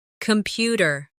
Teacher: The stress is on the second syllable. Compu tear. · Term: word stress